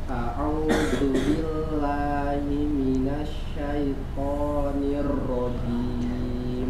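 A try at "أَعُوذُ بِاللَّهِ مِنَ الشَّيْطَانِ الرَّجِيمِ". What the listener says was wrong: Lamnya tidak tebal ya. Billah salah. Billah. A'udzu billah.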